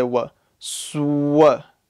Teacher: swear that'll be a big mistake okay don't add the wha look what happens to my lips when i say what it becomes round